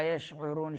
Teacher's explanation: شین میں تفشی، آواز پھیل جاتی ہے منہ کے درمیان